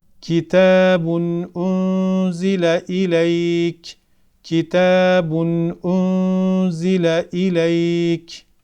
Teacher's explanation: Z gelmiş ve burada ihfa meydana gelmiştir Biraz önce anlattığım şekilde nunun sesini gizleyerek okuyoruz